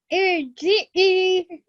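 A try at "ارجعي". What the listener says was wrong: Okay, we have to elongate that because that's a ya madda at the end. Irji'i.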